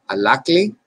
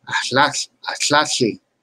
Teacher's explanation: You can see they're more or less both the same. One has a voiced L, one has a devoiced L.